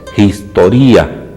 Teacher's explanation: El espíritu áspero suena como una J apenas esbozada